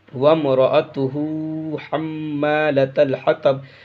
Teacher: اس میم پہ گنہ کرنا ہے، اس لیے میم مشدد ہے۔